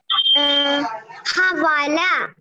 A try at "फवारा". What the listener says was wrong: नॉट हवाला. फवारा और फवारा. How starting with pha only. Okay, pha or fa. Not any other letter.